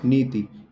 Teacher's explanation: नी लंबा खीच रहा हल्का सा और ति एकदम वही स्टॉप हो गया